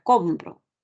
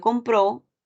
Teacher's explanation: la palabra compro ubica el acento en la penúltima sílaba en cambio compró ubica el acento en la última sílaba